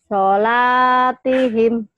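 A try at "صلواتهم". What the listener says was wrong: salah. Lihat lagi. Sholatihim dari mana kok panjang laknya? Ayo.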